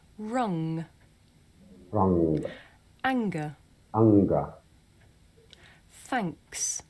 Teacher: بتنطق من الخلف زي الخنفان كده وزي الغنة عندنا كده في العربي